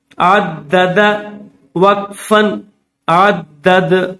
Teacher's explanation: عین دال زبر عد، دال زبر د، عد، دال زبر د، عدد، وقفن، عدد۔ آخر میں یہ جو دال ہے یہ حروف قلقلہ میں سے ہے، جب وقف کریں گے تو یہ جزم بن جائے گا، ساکن بن جائے گا، اس لیے وقف کرتے ہوئے اس کو ظاہر کر کے پڑھیں گے، یعنی منہ کے اندر اس کی آواز جو ہے وہ ظاہر کی جائے گی۔